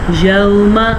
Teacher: واو ساکن سے پیچھے والے حرف پہ زبر ہو تو واو لین کہلاتا ہے۔ واو لین کو نرمی سے پڑھتے ہیں، بغیر کھینچے پڑھتے ہیں